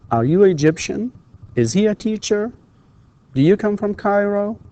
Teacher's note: All of these, of course, with rising intonation.